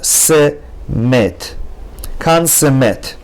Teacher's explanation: So for example, kan se met. The first shva under nun is silent, kan. The second shva under samech is na, it's moving, it's longer, se met. Kan se met.